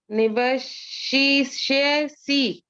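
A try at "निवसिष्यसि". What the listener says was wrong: Yeah, it is not she, it is nivasi. Say start with nivasi. Nivasi.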